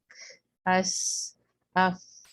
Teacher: آواز آ ہی نہیں رہی کیونکہ ایئر ہے، اور ایئر کو صرف محسوس کیا جاتا ہے اور بہت قریب سے سن سکتے ہیں۔ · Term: ہمس